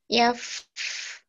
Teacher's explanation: Wa may yaf'alhu minkum fa hati-hati hurufnya ya. Fa-nya tuh yaf, ngalir itu suara desisnya. Yaf.